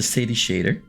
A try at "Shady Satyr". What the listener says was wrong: Shady Satyr, or the Sadie Shader. You mix up your H's.